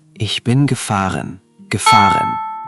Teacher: Just soften that R at the end. In German, it's lighter, more in the back of the throat, not a strong American R.